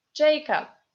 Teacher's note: B in the end of the word becomes p according to Russian phonetic rules. And O, unstressed, as you already know, is A.